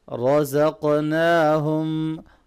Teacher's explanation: را کو موٹا پڑھیں گے، قاف پہ قلقلہ کریں گے